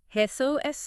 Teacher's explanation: That soft J almost like an H sound. Emphasis on the second syllable.